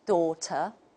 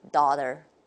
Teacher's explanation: the American model will show very strong R-colored vowels here